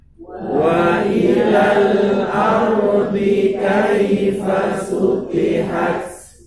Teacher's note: Ada Wa ila dan al ardi. Wa ila panjang dibuang matnya menjadi wa ilal. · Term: takhallus